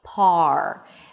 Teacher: The lips round just a bit. They're not as rounded as they are for the R, the beginning of a word. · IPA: pɑːr